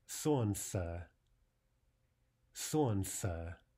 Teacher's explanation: In the word for sun, we drop the l.